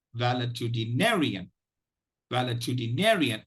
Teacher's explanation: the primary stress is on the 5th syllable ne, the secondary stress is on the 1st syllable val.